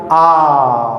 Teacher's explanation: मुंह क्या है पूरा खुला, इससे बड़ा ज़्यादा नहीं खुल सकता, तो ये क्या है निवृत्त है, जिसमें मुंह पूरा खुला होता है, एक ही होता है।